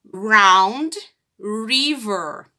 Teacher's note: Ele é pronunciado com a ponta da língua tocando o céu da boca. Então, ele é fraco. Por exemplo, round, não round.